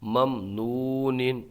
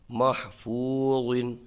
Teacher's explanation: پیش نو ممنو، نون دو زیر نن ممنون، اظہار شفوی ہوگا، یہاں پر واو میں واو مدہ ہوگا، ایک الف کھینچ کے پڑھیں گے ، ممنون۔ میم حا زبر مح فا واو پیش فو محفو